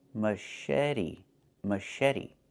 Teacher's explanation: The CH makes a soft sh sound, like in fish, mush. And then eddy.